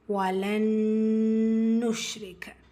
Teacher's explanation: ரா கேசரா பேச்சு வந்திருக்கு, மெல்லினமாக ஓதணும்.